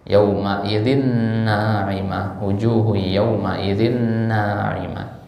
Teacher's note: Ya, sehingga ya dia dilebur tanwinnya secara sempurna, maka idgham kamil lah namanya